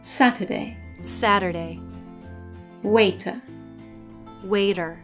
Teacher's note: in American English when the letter T is in the middle position in a word it sometimes changes to a soft D this happens either when it's between two vowels or when it's